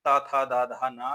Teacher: दंत में तावर्ग ता था दा धा ना ध्वनियां आती हैं